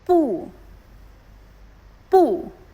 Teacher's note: the fourth tone is sharp and falling, like giving a comment from top to bottom.